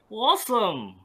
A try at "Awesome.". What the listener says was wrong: Yes. Very good.